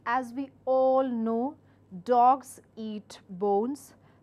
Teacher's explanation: When you want to preface your statement, use a rising tone. So each time you're giving out a sentence, you have to remember one thing, that you have to rise in your tone and give out the piece of information.